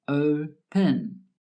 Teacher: The first syllable is stressed, open. The last syllable, pen, is not stressed